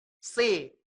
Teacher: Pangkalnya tetap melengkung ke atas. Maka dari itu inilah disebut huruf isti'la, huruf tebal ya.